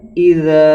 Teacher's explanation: الف ساکن سے پہلے زبر ہے، یہاں الف مدہ ہوگا، یعنی 1 الف کے برابر کھینچ کے پڑھیں گے